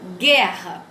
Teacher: quando eu li guerra, o U não foi mencionado, né? Não tem um fonema, não tem som aqui.